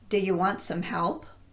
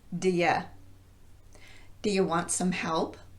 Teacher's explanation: Not only am I reducing do to d, I'm also reducing you to y. Do ya? Do you want some help?